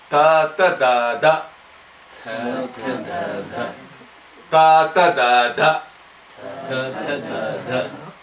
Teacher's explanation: because the tongue is really touching the top teeth, it's called dental.